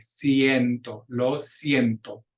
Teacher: Here we've got our first diphthong, that IE together, but each vowel still makes its pure sound.